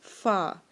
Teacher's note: तो हम अदा करेंगे, हमारे जो होंठ का नीचे वाले होंठ का पेट है, यानी कि नीचे वाले होंठ का अंदर वाला हिस्सा है, उस पे हम अपने दांत रखेंगे तो लफ्ज़ अदा होगा फ़ा